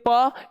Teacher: प का उच्चारण स्थान हम लोग का आता है ओष्ठ, यानी इसका उच्चारण स्थान ओठ से हो रहा है, या अर्थात ये हमारे लिए प का उच्चारण स्थान ओठ से हो जाएगा।